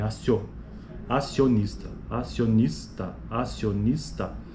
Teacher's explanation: esse é um ditongo crescente porque o i ele é uma Glide ou seja ele é uma semivogal e o o é a vogal